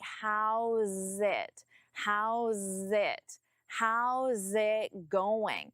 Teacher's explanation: And even though there is no connection between it and going, I still don't pause between them. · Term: connect your words